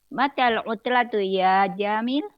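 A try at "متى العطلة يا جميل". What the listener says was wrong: Panjang pendeknya. Ulang lagi.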